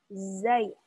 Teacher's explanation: Jadi ketika mengucapkan huruf zai, jangan sampai keluar udara yang deras. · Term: jahar